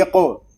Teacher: قاف ساکن ہے، اس میں قلقلہ خوب ظاہر کریں گے، یہ حروف مستعلیہ میں سے بھی ہے، اس کو پر بھی پڑھیں گے، اقو۔